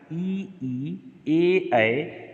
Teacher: जीभ एक जगह नीचे के दांत को छू करके वहीं रुकी रह रही, ई ए, देखिए उच्चारण करिए, तो जीभ आगे आ रही, लिहाजा अग्रस्वर है।